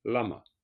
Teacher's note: le son du la va monter légèrement